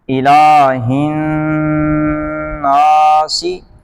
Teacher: نون میں غنہ ہوگا، شد ہے